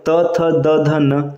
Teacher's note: त वर्ग का उच्चारण स्थान होता है दंत